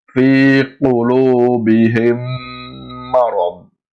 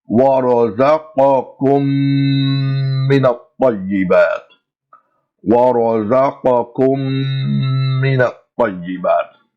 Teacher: We join the two words together and we pronounce the joining sound or the meme sound approximately 2 times its original length. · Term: Idghamul Meemus Sakina